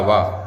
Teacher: माने दंत भी और ओष्ठ भी, तो दांत और ओष्ठ दोनों को मिलकर के वा बोल पाते हैं। वा बोलने का प्रयास करेंगे तो आपको पता चल जाएगा कि दांत के साथ साथ ओष्ठ का प्रयोग भी इसमें हो रहा है। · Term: दंतोष्ठ